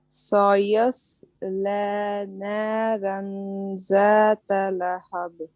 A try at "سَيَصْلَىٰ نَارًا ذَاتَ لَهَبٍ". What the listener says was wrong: دیکھیں نارن، اب دیکھیں اب آپ کا را باریک ہو گیا تو نارن، اس کے بعد زا نہیں کہیے، بولیے ذات لہب. دیکھیں آپ کے اگر دانت ملیں گے نا تو زیڈ ساؤنڈ آئے گا. آپ دانتوں کو ملیں